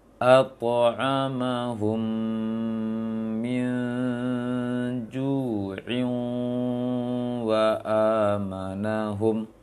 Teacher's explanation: kalau seandainya lanjut bacanya jadi satu nafas, maka in akan didengungkan.